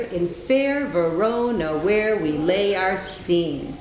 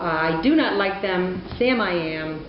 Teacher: you can hear those iams sounding unstressed, stressed